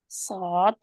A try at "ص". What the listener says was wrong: स्वाद दांत के ऊपर दोबारा जाए। अच्छा, आज ये स्वाद दाद कहने में आप तौआ की तरफ आप थोड़ा सी आवाज आ रही है, क्योंकि आप कोशिश कर रहे हैं कि मखरज में रहें, है ना। तो जिस वजह से उनकी थोड़ी सी बदल रही है ना।